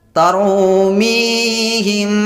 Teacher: Maka cara membacanya dipanjangkan serta didengungkan 2 harakat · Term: ikhfa syafawi